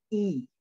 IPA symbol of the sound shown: i